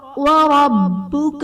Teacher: وربک میں را پر زبر ہے، را کو پر پڑھا جائے گا